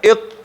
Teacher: آواز فورا ولی باید بند شي ځکه شدت پکې ده قوت او سختی پکې ده